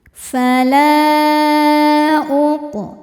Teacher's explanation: Mad tabi'inya alif didahului harokat fathah pada kata pertama yaitu fala, sedangkan hamzahnya adalah u pada kata kedua yaitu uqsimu. Maka lamnya panjang, boleh 4, boleh 5 harokat. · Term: mad jaiz munfasil